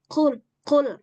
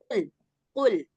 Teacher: Dia punya sifat jahr. Qul tanpa ada suara hembusan angin. Nah, kemudian yang satu lagi qof dia punya sifat istila.